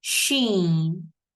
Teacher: Sheen is going to be pronounced from the middle of our tongue.